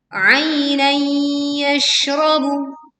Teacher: fathah tanwin bertemu ya, kita leburkan disertai dengung sehingga tidak tergesa-gesa